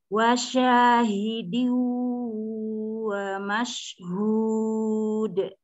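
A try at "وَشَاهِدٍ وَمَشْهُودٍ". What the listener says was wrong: Wasyahidin. Jadi, sebagian masuk ke hidung. Kalau wasyahidin itu masih bersih, tuh. Masukin gunahnya ke hidung, ya.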